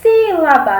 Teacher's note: nós vemos que o se é o mais forte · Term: sílaba tônica